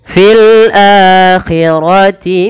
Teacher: Di sini posisi hamzah di sebelah kanan daripada alifnya. Sehingga ketika adanya hamzah bertemu dengan huruf mad, nah di sini bertemu dengan alif dipanjangkan dua harakat dan dia dibaca mad mad badal.